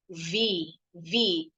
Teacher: Pita suaranya nggak bergetar. Tapi kalau V, huruf V, this is a voice consonant sound. Voice berbunyi, berarti pita suaranya bergetar.